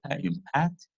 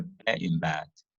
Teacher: Also called tense and lax, refer to consonants pronounced with greater and lesser energy. English has fortis consonants such as the pa in pat, the corresponding lenis consonants such as the ba in bat. Fortis and lenis consonants may be distinguished by tenses or other features such as voicing, aspiration, and length or of nearby vowels. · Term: force of articulation